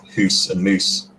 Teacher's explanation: Geordie still has hoose and moose for broader speakers, for house and mouse